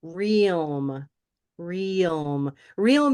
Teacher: There's a Y sound right in there before you go to this dark L place.